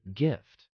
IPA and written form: ɡɪft (gift)